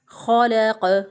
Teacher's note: तो ख जो है वो मोटे हरूफ में से, इसको मोटा करके पढ़ेंगे, पुर करके पढ़ेंगे। खलक़, लाम बारीक होगा।